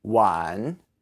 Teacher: And the first word, wan, you just have to add the W and say it in the 3rd tone, which is the dipping tone